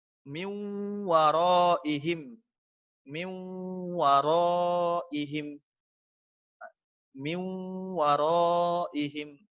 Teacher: idgham bi gunnah ini dalam membacanya itu harus ditahan, harus dipanjangkan sekira-kira paling tidak 2 harokat, 2 ketukan, dipanjangkan 2 ketukan.